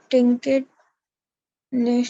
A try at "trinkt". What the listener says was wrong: Trinkt, not trinket, trinkt.